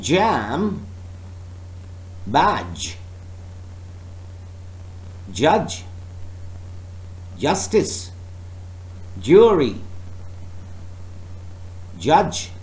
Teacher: blocked with tongue just beyond the alveolar ridge then released as a fricative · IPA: /dʒ/